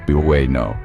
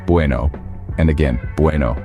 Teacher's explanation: in Bueno the stress falls on the first syllable bu